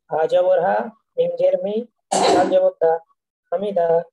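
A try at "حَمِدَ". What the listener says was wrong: হায়ের যে মাখরাজের বিষয়টা, এইটাকে কিন্তু আরেকটু চাপ প্রয়োগ করতে হবে মাখরাজে। হা, হামিদা, হামিদা, হা জবর হা।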